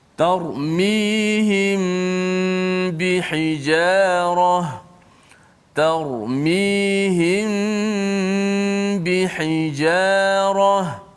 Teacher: mim mati bertemu dengan ba, maka kita baca secara ikhfa syafawi, iaitu kita kena panjangkan kadar dengung dia satu. Dan yang kedua, pastikan mulut kita itu sentuh bibir kita secara sentuhan yang biasa.